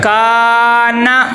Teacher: دیکھیں کاف کو لمبا کرتے ہوئے نون کو نہیں لمبا کرنا، کاف کو ہم اس لیے لمبا کریں اس کے آگے الف مدہ آ گیا ہے